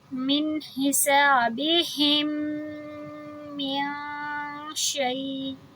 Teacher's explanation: من ایک حرکہ، حسابہم دو حرکہ، کیونکہ میم سکون ہمارا لاسٹ حرف ہے الفاظ کا، حسابہم ایک پورا لفظ ہے، حسابہم کا آخری حرف میم جزم ہے، اور من کا پہلا حرف میم تشدید ہے۔